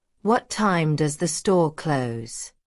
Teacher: when asking wh questions the intonation typically Falls at the end unlike yes/ no questions which often have a Rising intonation at the end · Question intonation. When asking WH questions, the intonation typically falls at the end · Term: falling intonation, Falling intonation